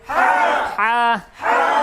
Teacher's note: কণ্ঠনালীর মধ্যখানে হইতে আওয়াজকে চাপাইয়া